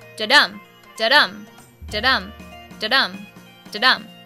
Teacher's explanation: the stress should be on the second syllable because we have a non-stressed, then stressed pattern. So when reading or writing iambic pentameter, the stress should be more like da-dum.